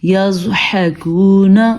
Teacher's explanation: جھٹکا پیدا نہ ہو کیونکہ زواد حروف قلقلہ میں سے نہیں ہے، البتہ ہم نے زواد کو پر پڑھنا ہے